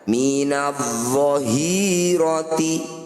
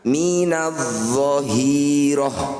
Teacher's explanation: Ketika dibaca terus akan menjadi ta, ketika dihentikan akan menjadi ha sukun. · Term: ta marbutah